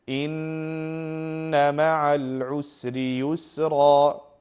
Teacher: Noon and meem both, if they have a shadda, you make a ghunna sound and you prolong it for at least two counts